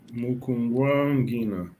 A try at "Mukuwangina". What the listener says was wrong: Be careful, you drop the nasal. We can only have a nasal once, yes? I give you the nasal, you drop the nasal when you answer back. Muku wangina, yes, you drop the nasal.